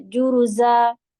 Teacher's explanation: نہیں پڑھیں گے، صو، صعیدن جرزا، جو رو ہیوی ہوتا ہے، اور یہ زا ہے، بزنگ ساؤنڈ دیتے ہیں اس میں